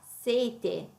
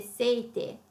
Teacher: sete è una consonante singola, viene dopo una vocale lunga, la E in sete è lunga